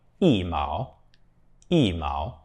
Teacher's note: When E is followed by any other tone, then it changes to the fourth tone.